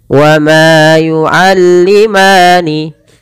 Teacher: mad tabi'i panjang 2 harakat dan bunyinya harus sama